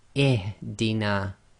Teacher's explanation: we read the Hamzatul Wasl as if it's carrying a kasra. So that's why we say ihdina.